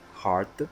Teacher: there's a D at the back, try to make a strong vocal sound at the end